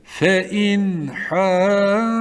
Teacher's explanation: Boğaz harflerinden ha gelmiş. Burada nunu normal okuyup bekleme yapmadan devam edeceğiz. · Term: izhar harfi